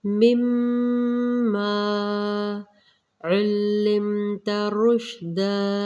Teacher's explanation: مما پہ میم مشدد غنہ کیا جائے گا، مقدار پوری کریں گے